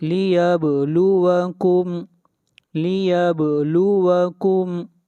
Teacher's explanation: با کے اوپر قلقلہ ہوگا، آواز کو ہلائیں گے